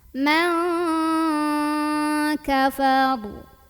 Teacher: nun sukunnya dibunyikan samar-samar mau bilang kaf sambil dengung. Nah ini dengungannya lebih besar dibandingkan dengan kesamarannya. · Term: ikhfa